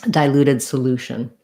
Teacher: then solution that one also is stressed on the loo but instead of the t saying a t like in dilute solution it's going to have the sh sound